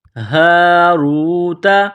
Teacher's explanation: ایک گول ہا ہے چشمے والی، صرف منہ سے ہوا نکالنے کی طرح اس کو پڑھیں گے